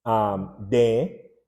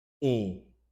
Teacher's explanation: you delete the M, and what is left is DE, and that E now has that nasal quality to it